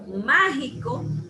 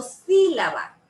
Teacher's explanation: 3 sílabas y llevan ese acento en esa primera sílaba. Por ejemplo, mágico, yo no digo mágico ni digo mágico. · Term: esdrújulas